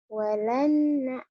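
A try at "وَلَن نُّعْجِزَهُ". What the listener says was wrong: Walan nu'jizahu. No, no, bukan na, walan nu. Walan nu'jizahu. Walan nu'jizahu.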